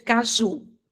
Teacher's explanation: Caju é o ju que eu acentuo, que eu pronuncio com mais intensidade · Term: sílaba tônica